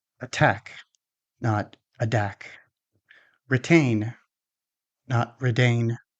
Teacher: The following words have the T in the stressed syllable. Which means we don't use the flap T, but we use the strong T or the fully released T instead.